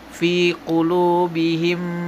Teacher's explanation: Idam Apabila ada mim sukun beremu dengan mim cara macanya dalam memasukkan huruf mim ke dalam huruf mim disertai dengan suara gunna sekitar dua ketukan atau harakat